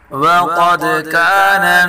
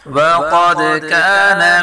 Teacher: قاف کو پر پڑھیں گے، دال میں قلقلہ کریں گے اور کاف کو باریک پڑھیں گے